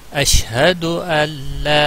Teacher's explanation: یہاں پر حروف مد ہے تو ایک الف کے برابر کھینچیں گے، لیکن اس کے بعد حمزہ آ رہا ہے بشکل الف، گویا کہ چھوٹی مد یہاں پر لگی.